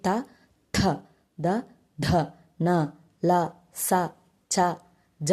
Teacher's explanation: దంత్యములు అంటే దంతాల నుండి పుట్టిన వర్ణాలను అక్షరాలనే దంత్యములు అంటారు